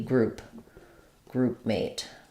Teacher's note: We wouldn't release that P probably, not groupmate, but groupmate, an unreleased P there.